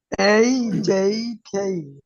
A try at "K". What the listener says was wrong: হুম এটা কিন্তু ক দেয় না, ক না, খ হবে, খ, খেই, খেই। খেই।